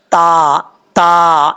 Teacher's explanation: زبان کی نوک اوپر والے دانتوں کی جڑوں سے لگے تو تا پڑھا جاتا ہے۔